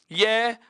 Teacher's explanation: य और व वर्ण का उच्चारण करते समय हमारी जीभ किसी मुखावयव को स्पर्श नहीं करती। य और व वर्ण का उच्चारण करते समय जीभ किसी भी मुखावयव को स्पर्श नहीं करती है, अर्थात इन दोनों वर्णों का उच्चारण करते समय जीभ को किसी प्रकार की क्रिया प्रतिक्रिया नहीं करनी पड़ रही। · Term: अर्ध स्वर